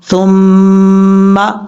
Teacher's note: میم کے اوپر شد ہو تو وہاں پر آپ نے ایک الف کی مقدار ہر صورت غنہ کرنا ہے، یعنی لازمی وہاں پہ غنہ آپ نے کرنا ہے۔